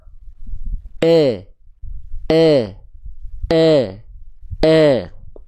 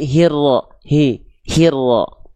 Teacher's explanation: Tengah lidah kita kurang diangkat sehingga vokal i-nya Enggak kerasa jelas